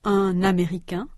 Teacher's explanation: In the right column, the same words are followed by a vowel sound, A. A consonant N is pronounced between un and américain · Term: liaison